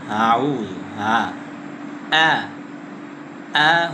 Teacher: তৃতীয় আরেকটি ভুল হলো হামজাকে নরম করে পড়া যাবে না। হামজাটা হলো শক্ত করে পড়তে হবে। যেমন আউ আ হল শক্ত।